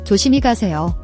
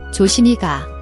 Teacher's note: Watch your pronunciation, the SI syllable. The S sound changes to a SH sound when followed by I. So, is pronounced like she, not C.